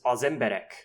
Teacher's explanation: And they give the example here where you have emberek, men, versus az emberek, the men, where the az is just a function word article, but it doesn't pull stress, and so the whole phrase has stress on the second syllable because the first syllable is an unstressable function word